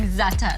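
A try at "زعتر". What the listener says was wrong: Yeah, she always says the R is silent. Za'atar.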